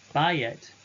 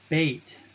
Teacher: diphthong aye will contract to its sere, as in bayet, absolute form, a house, but beit, construct form, house of.